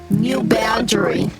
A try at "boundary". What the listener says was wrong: That just sounded. When you said boundary, it sounds like you're saying band dream.